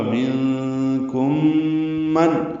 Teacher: نون ساکن کے بعد کاف آنے کی وجہ سے اخفا ہے، میم ساکن کے بعد میم آنے کی وجہ سے ادغام ہے، غنہ ہوگا